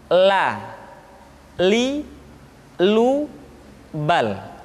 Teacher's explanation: Selanjutnya huruf la diucapkan dengan mengangkat ujung lidah kita dengan disentuhkan dengan langit-langit di depan pengucapan huruf ra.